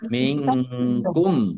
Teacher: nun sukun bertemu dengan huruf kaf, bacaan ikhfa dibaca samar-samar